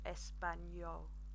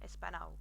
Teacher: imagine that you've got the N and a year Y sound afterwards